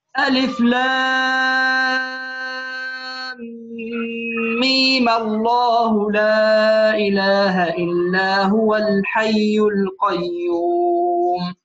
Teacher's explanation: ألف لام ميم نقول هذه عند الوصل يا أحبة، يمد اثنان أو ستة. ألف لام ميم الله عند الوصل تمد اثنان أو ستة